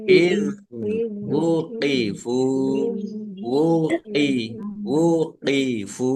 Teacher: Dibaca panjang boleh 5, boleh 2 harokat. Iz wuqifu, zal sukun bukan kol-kolah. Ya, jangan dipantulkan.